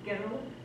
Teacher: We can't say the R and the L together. We put this imaginary A in the mid, girl. I can't say it any other way.